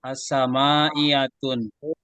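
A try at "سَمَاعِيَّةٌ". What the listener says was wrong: Jangan dikasih tanwin ya. Sama iyatu ala salasata asyara.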